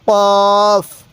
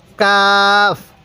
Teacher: চিহ্নিত করবেন ফায়ের উপরে এক নোক্তা কফের উপরে দুই নোক্তা তাহলে কফ উচ্চারণের সময় হালকা গলার মধ্যে ধাক্কা দিব কফ এরপরে কাফ কাফটা সোজা উচ্চারণ হবে কাফ কোনো ধাক্কা হবে